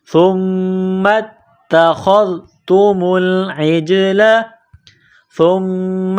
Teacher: سا کو پڑھتے وقت زبان باہر نکالیں گے، سا کو نرم کریں گے، سا کو میم کے ساتھ ملائیں گے، میم مشدد ہے، غنہ کریں گے، آواز ناک میں چھپائیں گے، میم کو تا کے ساتھ ملانا ہے، تا کے اوپر تشدید ہے، تا کو دبانا ہے · خا کو ذال کے ساتھ ملائیں گے